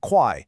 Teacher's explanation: First, tonal accuracy on quai is non-negotiable. It has to be a sharp falling quai, not a questioning quai or a flat quai.